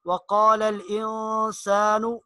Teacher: انسان نون ساکن کے بعد سین آ رہا ہے تو یہاں پر اخفا ہوگا